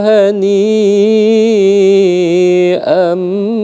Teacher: Jadi di sana ketika ada kasratain eh fathatain bertemu dengan ba itu biasanya ada mim kecil karena memang ee makhrajul huruf ba itu ya sama seperti ma ba. Jadi ketika kita ambi itu seakan-akan ada mim di sana. Nah, maka ada mim kecil di sana. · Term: iqlab